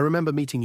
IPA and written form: rɪˈmem.bər ˈmiː.tɪŋ (Remember + -ing)